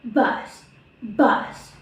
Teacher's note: the phonetic symbol in this word are B, voice, bilabial, plosive, and S, voiceless, alveolar, fricative